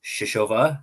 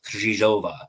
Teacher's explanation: It is not, in my opinion, pronounced Shishova, as we have seen in a couple of different outlets. But it is more of a rolled R with a Z sound in that second letter